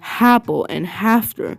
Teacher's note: H insertion in words like apple and after becoming happle and hafter